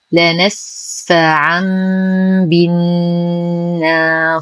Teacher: لا نسفعا بي. لدينا تنوين وبعده حرف الباء فالحكم إقلاب يقلب التنوين ميما عند الباء مع غنة كاملة مرققة.